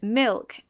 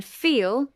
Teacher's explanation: Dark l occurs before consonants and at the end of words. It is produced with the back of the tongue raised.